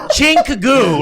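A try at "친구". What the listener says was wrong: No, it's Chingoo, my friend. There's a G in there. There's a G in there.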